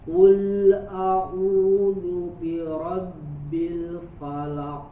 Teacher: Qul a, ya tidak dilepaskan, tidak qul a, lidahnya tidak dilepas dulu dari makhraj huruf lamnya. Tahan, langsung ketika sudah ditahan baru baca huruf setelahnya.